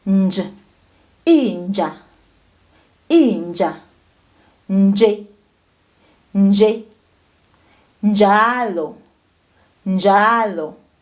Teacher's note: Jele, jele, jezisa, jezisa, ja, je, ji, jo, ju. When you add an N to the J, it becomes nj, nj. So now your tongue touches your palate.